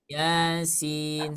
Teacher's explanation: jangan dibaca panjang tapi dibaca Dua harakat saja